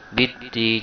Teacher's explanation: Karena lamnya tidak terbaca alias dilewatkan, langsung dibaca dalnya. Bid-din. Jadi walaupun ada alif lam di sana, lamnya tidak terbaca karena termasuk dalam kategori alif lam syamsiyah, ya.